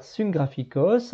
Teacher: les gutturales vont faire se transformer le nu en gamma nasal